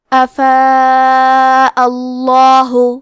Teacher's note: اس مد میں ہم اپنی آواز 4 مد کے برابر لمبی کریں گے. آخری میں کیونکہ حمزہ پہ زبر ہے تو لفظ الجلالہ کے لام کا حکم ہے تفخیم، تو ہمیں حرف اللام کو موٹی آواز میں پڑھنا ہے. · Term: مد واجب متصل